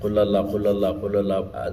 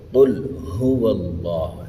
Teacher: قل اللہ پڑھتے ہیں، ہا کو بالکل چھوڑ دیتے ہیں۔ قل اللہ، یہ ہو اللہ کا جو معنی ہے وہ ادا ہی نہیں ہوتا۔